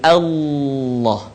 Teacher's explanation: huruf lam harus terdengar suaranya menebal dengan cara menutup kan bagian lisan ke langit-langit pertikaian out jadi